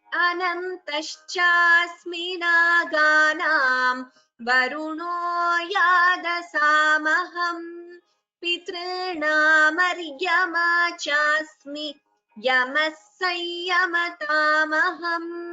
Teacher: And Chasmi is a Hrasva Swara. So please chant it only as a Hrasva, that is a short vowel.